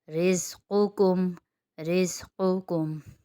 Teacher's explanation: یہاں پر قاف موٹا اور کاف باریک ہے۔ زیادہ تر پڑھنے میں کیا غلطی ہو جاتی ہے کہ قاف اگر موٹا ہم حرف ادا کریں تو اگلا لفظ ہی ہم موٹا کر دیتے ہیں، یا اگلا باریک ہے تو ہم پچھلا اس کے ساتھ باریک کر دیتے ہیں۔